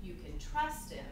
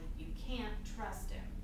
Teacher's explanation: can't is stressed and the vowel is clear